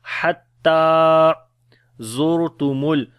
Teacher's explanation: را کو موٹا پڑھیں گے، زا کو سخت پڑھیں گے · حتی، ہا کو گلے کے درمیان والے حصے سے پڑھیں گے، تا کو لمبا کریں گے، کھڑی زبر ہے اس کے اوپر